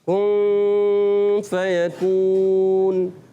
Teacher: نون کی آواز کو نہیں، نون کو چھپاتے ہیں، نون کو چھپا کے ادا کرتے ہیں، مگر غنّے کی آواز آ رہی ہوتی ہے، غنّے ناک میں آواز جاتی ہے